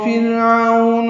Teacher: فرعون را باریک ہے، او واولین ہے